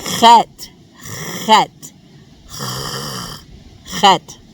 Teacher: And its sound can be a little bit difficult for English speakers because we don't have this sound in English. It sounds like a raspy H sound, kind of like the sound you make if you're trying to clear your throat of phlegm.